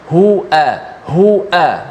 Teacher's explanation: huruf hamzah dengan ha ni satu makhraj, di mana pangkal leher kita